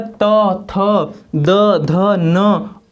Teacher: इनको बोलने पर हमारी जो जिह्वा है वो हमारे दांत को चोट कर रही है, दांत को स्पर्श कर रही है, हल्का सा स्पर्श कर रही है।